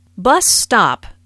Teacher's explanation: bus stop is a compound noun with the main stress on the first word